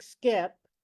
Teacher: if there's an S before a K in English, like skip, we don't aspirate the K.